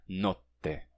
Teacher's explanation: O T dura mais tempo, porque é TT. Em italiano tem isso na pronúncia, tá? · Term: T duplo